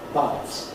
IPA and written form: bʌdz (buds)